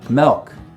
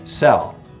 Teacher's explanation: Some front vowels get lowered before L sounds.